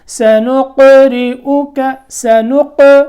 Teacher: قاف ساکن ہے، پیچھے ہم نے نون کو قاف سے ملایا تو کیا کون سی آواز پیدا ہوئی؟ قلقلے کی آواز. یہاں اس کو یہاں جنبش اور حرکت دینی ہے.